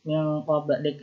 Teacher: suara yang dihasilkan ketika membunyikan ikhfa ab'ad ini itu seperti suara NG atau seperti kata hidung, kentang, dan sebagainya, dengan catatan suaranya itu dipanjangkan 3 harokat, didengungkan 3 harokat, kemudian baru ke huruf setelahnya.